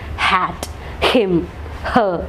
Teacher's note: it comes from the glottis. എയർ അവിടെ നിന്ന് വരുന്നു, അവിടെ നിന്ന് അങ്ങനെയാണ് ആ ശബ്ദം പ്രൊഡ്യൂസ് ചെയ്യുന്നത്. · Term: glottal